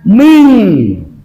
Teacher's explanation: Sebab ada nun mati ke depan ada huruf sya. Nama hukumnya adalah ikhfa. Maka dibacanya ming.